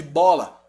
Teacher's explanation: interrompe esse som de diversas maneiras tá quais são elas lábio como é o caso de bola você fechou os lábios